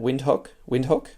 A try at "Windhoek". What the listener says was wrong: The Afrikaans language treats the W like a V, and so it catches natural English speakers.